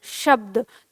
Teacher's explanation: आप इसे बोल रहे हैं शब्द, तो आपकी जो जीभ है वो तालु के नीचे आ रही है